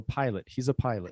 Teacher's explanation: first pilot. pilot, the stress syllable is the first one